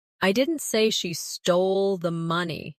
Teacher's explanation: Emphasize didn't. I didn't say she stole the money. Meaning you are denying it.